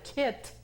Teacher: cuando decimos kit, que está la T, explosiva